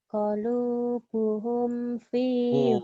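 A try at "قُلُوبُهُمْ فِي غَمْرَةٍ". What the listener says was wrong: kulu, bukan kolu, kulu.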